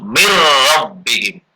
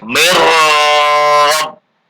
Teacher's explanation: Sekarang yang ro, misalnya min rabbihim, jadi membacanya yang betul mir rabbihim. Dan tidak boleh dengung, nggak boleh mir rabb, tapi singkat aja mir rabbihim.